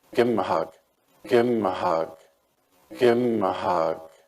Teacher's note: it seems to me that the V of give is also cut